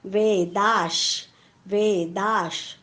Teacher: दाच्या पुढे विसर्ग आहे, विसर्गाच्या पुढे श आलेला आहे. विसर्गाच्या पुढे जेव्हा श येतो तेव्हा विसर्गाचा उच्चार हलंत श होतो.